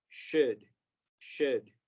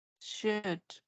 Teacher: Esta palabra, un verbo modal, me van a escuchar corregirlo durante todo el curso, porque es muy común que se nos olvide que el diptongo de la O y la U aquí suena como U, shu, y la L es muda